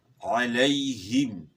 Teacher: یا کا مخرج جو ہے زبان کا درمیان اور اوپر کے تالو سے ہے، یعنی یا کی ادائیگی میں زبان کا درمیان اوپر کے تالو کے ساتھ لگے گا. علیہم، ہا کی آواز گلے کے آخر سے، اور میم جو ہے اس میں دونوں ہونٹ ملیں گے، دونوں ہونٹوں کا جو خشکی والا حصہ ہے اس سے جو ہے نا میم ادا ہوتا ہے.